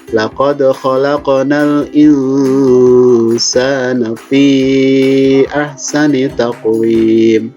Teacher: Huruf dal itu qalqalah jadi dipantul.